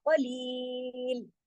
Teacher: रुकेंगे भी लेकिन जमाओ के साथ, यहाँ पे कलकला नहीं होगा, इसको हिलाएंगे नहीं, और कौफ को हर सूरत मोटा ही पढ़ेंगे।